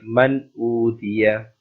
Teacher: you have to apply the rule of izhar here, and you do not make gunna on noon